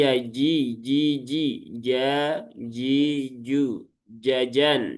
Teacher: itu dia ada di tengah lidah, ya. Tengah lidah, langit-langit atas, ya. Tengah lidah, langit-langit atas. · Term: huruf jim